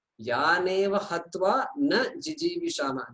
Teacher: there is also a pause between Na and Jiji Vishama because they're two separate words